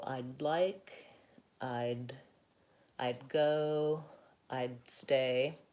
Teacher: the final D in I'd, we tend to do kind of a stopped D